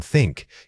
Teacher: For the unvoiced sound, like in think, you need to place your tongue gently between your teeth and blow air out. This is a pure whisper of air passing over your tongue tip. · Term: unvoiced th